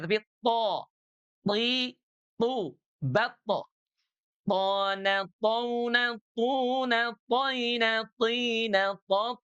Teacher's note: Kalau huruf th dia clean, bersih, tidak ada nafas yang mengalir.